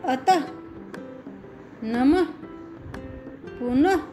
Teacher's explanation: ओह की मात्रा का उच्चारण करते समय वर्ण के अंत में हो की ध्वनि आती है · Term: विसर्ग